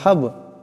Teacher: সাকিন বা সাকিন বা কলকলা হরফ, আওয়াজটিতে একটু একটু ঝটকা দিয়ে উচ্চারণ করতে হবে